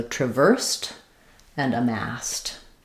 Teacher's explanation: because we're stressing on the verse syllable, the first letter A is going to be a schwa, sounds like tra, very short vowel there, and then it's just like the word versed, V-E-R-E-S-E-D, where that ED sound is going to sound like a T as well.